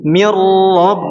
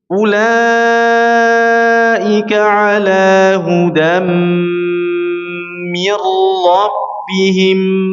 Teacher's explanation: bila gunnah dengan mentawassutkan atau membainiyahkan huruf ra-nya, mengalirkan sedikit huruf ra-nya.